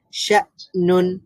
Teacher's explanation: হামজা এটা যেহেতু শাদীদার হরফ বা শিদ্দাতের হরফ, এটা সাকিন হয়েছে, এই কারণে এখানে প্রপারলি আওয়াজটা বন্ধ হয়ে যাবে।